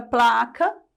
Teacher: eu tenho um encontro consonantal mas eu não tenho um som eu tenho dois eu consigo perceber o som do p e consigo perceber o som do L